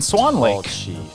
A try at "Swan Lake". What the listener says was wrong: I've never heard anyone say Swan Lake and put the emphasis on Swan. Like you just did. Swan Lake. You said Swan Lake. Everyone I've ever heard says Swan Lake. Swan Lake. No one says Swan Lake.